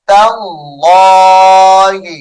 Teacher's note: رزقناهم تاللہ تا لام زبر تل لام کڑی زبر لا تاللہ اس میں جلالت اللہ کا لام پر کر کے پڑھا جائے گا